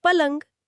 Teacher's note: तो र और य का गुच्छा घिस कर ल बन गया और ये बन गया पलंग